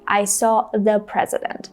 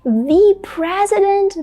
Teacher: native speakers might say thee even if the next word begins on a consonant sound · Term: emphatic the